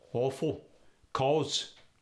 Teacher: the ah sound goes to an exaggerated aw sound